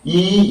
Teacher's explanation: E is a front close unrounded long vowel sound